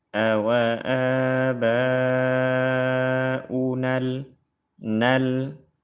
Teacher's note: huruf mad sukun bertemu dengan sukun maka huruf madnya dibuang dalam lafaz